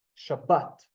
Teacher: So, Shabbat in an Israeli tonality, a dialect, I can hear the emphasis on the bet. Shabbat. So even though both of them are in a sound here, it would be a little bit more emphasized.